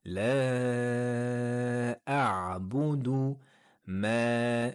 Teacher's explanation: La a'budu ma, voyelle longue de 2 temps